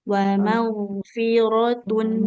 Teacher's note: bunyi nun sukun di tanwinnya alirkan dulu. Wa maghfiratun.